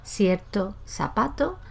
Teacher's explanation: el hablante que tiene seseo, que pronuncia todo eso como una «s»